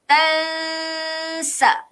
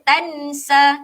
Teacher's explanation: kita kena sembunyikan sedikit bunyi huruf nun tersebut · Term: ikhfa hakiki